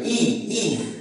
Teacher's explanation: রস্ব ই উচ্চারণের সময় আমাদের জিহ্বাটা উপরের দিকে থাকে, ই ই, এবং আমাদের ঠোঁটটা একটু সংবৃত মানে হলো সংকুচিত অবস্থায় থাকে। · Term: উচ্চ এবং সংবৃত